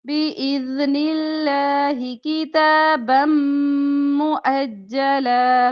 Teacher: बम दो जबर को मीम के साथ मिलाकर पढ़ेंगे तो इदगाम बिलगुन्ना